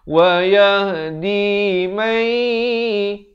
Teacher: Idgham bi gunnah di sini masuk bahasa dengung.